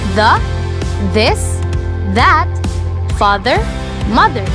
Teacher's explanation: These words buzz TH.